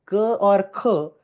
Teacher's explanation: So if you put two fingers over here and try to pronounce k or kh, you will feel the air easily passes. Your fingers will not feel any kind of vibration. Why? Because vocal cords are open, they do not vibrate, there is no initial sound present over there.